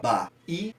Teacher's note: a gente tem uma ascendência na segunda sílaba. E nesse caso, penúltima sílaba, tornando assim a palavra Bahia uma paroxítona.